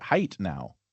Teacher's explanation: Height, all it did was turn into a t sound instead of a th.